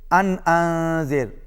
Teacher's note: ان انذر، پہلے نون پر اظہار ہے کیونکہ نون کے بعد حمزہ ہے، نون ساکن کے بعد حمزہ ہے، اور اس کے بعد پھر انذر دوسرے نون ساکن کے بعد ذال ہے، پہلے اظہار ہوگا، دوسرے نون کے بعد اخفا ہوگا، یعنی آواز ناک میں جائے گی۔ پہلے آواز ناک میں نہیں جائے گی، دوسرے میں آواز ناک پہ جائے گی۔